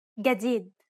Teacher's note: in Egyptian Arabic this letter is pronounced like a regular English G as in game